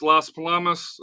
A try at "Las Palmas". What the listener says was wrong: Palmas. Not Palamas. Palmas.